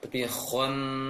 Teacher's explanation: bibir tidak boleh membulat, agak terbuka sedikit untuk menghindarkan penebalan nun nantinya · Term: tasydid ni nun